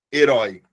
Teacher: Porque é oral e é aberto